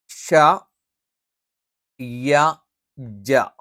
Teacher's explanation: ഇവിടെ ഷ, യ, ജ ഈ പറയുന്ന അക്ഷരങ്ങളെല്ലാം ഒരേ സ്ഥാനത്ത് നിന്നാണ് വരുന്നത്. ജ, ഷ, യ നാവിൻ്റെ മധ്യഭാഗം മേലെ അണ്ണാക്കിൽ സ്പർശിച്ചുകൊണ്ടാണ് ജ, ഷ, യ ഈ 3 അക്ഷരങ്ങളും നമ്മൾ ഉച്ചരിക്കുന്നത്.